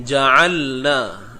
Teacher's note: Ni tengah kerongkong. Huruf ain datang daripada tengah kerongkong.